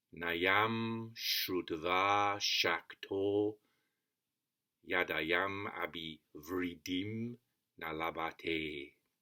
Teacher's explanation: the first syllable is short, then 5 long ones.